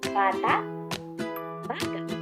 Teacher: ang pagpigil ng tunog sa dulo ng bawat salita na kung saan patinig ang huling titik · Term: impit